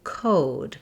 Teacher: The O vowel we have in the word code, and the O vowel is a sliding diphthong in English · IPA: /oʊ/